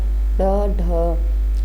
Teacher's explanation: जिनके उच्चारण में जीभ ऊपर उठकर झटके के साथ नीचे को आए।